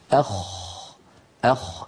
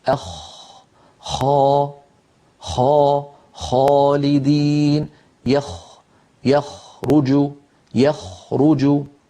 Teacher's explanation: انظروا، الخاء كما نرى أعلى بقليل من الغين، الخاء أعلى بقليل من الغين، وهي أيضا من أدنى الحلق، يعني من منطقة جذر اللسان مع الحنك اللحمي